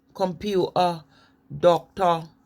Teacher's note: in london now the main difference is the glottal stop the tea is missing